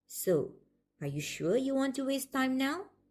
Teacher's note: the later part is likely to have Rising intonation because the speaker is uncertain